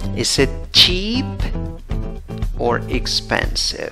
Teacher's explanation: cuando tienes or en la pregunta, la entonación va así para arriba y después de or baja y cae